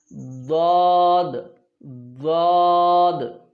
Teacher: اس میں تخفیم ہوتی ہے حروف ضاد کے اندر۔ آپ اس کو تھوڑا سا مزید موٹا بھی کر سکتے ہیں، لیکن دال اور ضاد کے اندر دونوں میں فرق کرنا ہے ہم نے، ٹھیک ہے۔